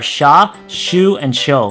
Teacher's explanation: Next is the consonant S, which is actually unique because you don't enunciate the sound of the letter Y at all